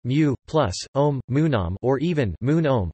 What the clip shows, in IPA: munomɑ